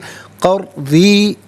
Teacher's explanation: تو را ساکن ما قبل قاف پر زبر ہوگا تو پر پڑھیں گے قر. ری را کے نیچے زیر ہوگا، دوسری مرتبہ پڑھیں گے تو باریک پڑھیں گے